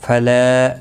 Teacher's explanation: لا الف مدہ ہے، ایک الف کے برابر کھینچ کر پڑھیں گے